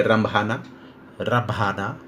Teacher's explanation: नाक में वाइब्रेशन हो रहा है लेकिन उस अनुपात में नहीं जिस अनुपात में अनुस्वार के केस में होता है · इस चंद्रबिंदी के उच्चारण में हवा नाक से निकलने के साथ साथ मुंह से भी निकलती है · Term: सेमी नेजल साउंड